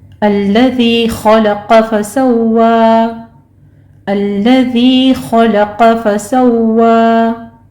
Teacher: खलक़ में क़ाफ और खा दोनों को पुर पढ़ा जाएगा।